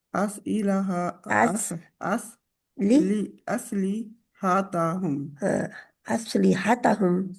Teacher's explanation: जज्म वाला अलिफ जब भी पढ़ा जाता है उसको थोड़ा सा झटका लगा के पढ़ते हैं